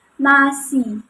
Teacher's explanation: mengucapkan nasi itu udaranya itu keluar dari hidung ya. Kayak nasi. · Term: proses nasal